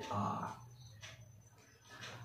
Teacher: এ, অ এই স্বরধ্বনিগুলিকে বলা হয় নিম্ন মধ্য স্বরধ্বনি, কেননা এই স্বরধ্বনিগুলি উচ্চারণের সময় কি হয়, যতটা নিচে নেমে যাচ্ছে জিভটা তার থেকে একটু উঁচুতে অবস্থান করে। সবচেয়ে তার নিচুতে জিভ নেমে যাচ্ছে কোন স্বরধ্বনিতে উচ্চারণের সময়, সেটি হচ্ছে আ